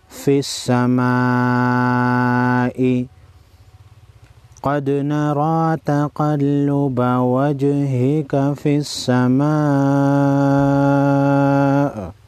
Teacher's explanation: بڑی مد کو 5 الف کے مقدار کھینچیں گے۔